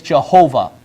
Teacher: the Hebrew VAV is pronounced as V not W